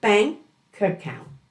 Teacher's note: So it sounds like optin optin or bank account. The K smoothly blends into the A · The K smoothly blends into the A, so you hear bank account. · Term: consonant-to-vowel linking